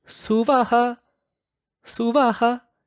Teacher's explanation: So the Ha at the ending, as per some traditions, is not to be elongated. Right? So they just do Suvaha, Suvaha, just an abrupt short Ha at the ending. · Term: Visarga expiration